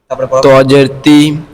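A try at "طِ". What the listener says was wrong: এই যে এখানে দেখতে হবে তজের তি হবে না। এখানে যদি তি পড়ি একই হবে, তাহলে মোটা পাতলা বুঝতে হবে। তাটা হচ্ছে পাতলা, ত মোটা। তো তাহলে তজের তৈ, তৈ, ভালো করে শুনে রাখতে মাসটা।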